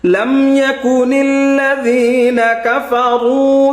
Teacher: জাল হরফটা নরম হবে